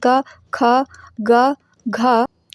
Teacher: जब हम कंठ की बात करते हैं तो कंठ में पूरा क वर्ग आता है क वर्ग क वर्ग का मतलब हुआ क वाली लाइन में